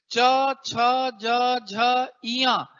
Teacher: आप हवा मुह से बाहर कर रहे हैं घर्षण के साथ तो स्पर्श भी हो रहा है और घर्षण भी हो रहा है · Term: स्पर्श संघर्षी